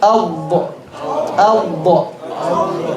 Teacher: the left side of the tongue should be touching the entire left side of the top teeth. Al-da. It's a very heavy letter.